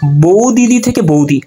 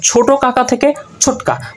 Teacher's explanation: পাশাপাশি সমুচ্চারণের দুটি ব্যঞ্জন ধ্বনি যদি থাকে, তার মধ্যে একটা লোপ পাবে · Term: ব্যঞ্জন চ্যুতি